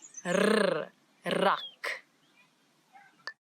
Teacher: This word it doesn't have the ch that we've been talking about, but now we've got a new sound in Afrikaans that a lot of people in different languages struggle with a little bit, and it's the rrr, as if your tongue is jumping up and down in your mouth